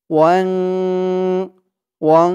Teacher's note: ইকফা গুন্না নাকের ভিতরে লুকিয়ে গুন্না করে পড়তে হবে